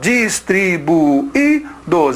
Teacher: A segunda vogal é o I e ele é tônico. Por isso, nós temos o acento nele. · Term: hiato